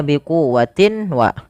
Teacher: Suara tanwinnya masukkan kepada huruf waw dan ditahan. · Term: idgham bi gunna